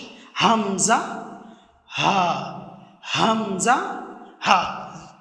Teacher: হলক তথা কণ্ঠনালীর নিচের অংশ থেকে উচ্চারিত হয় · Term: হরফে হালাকিয়া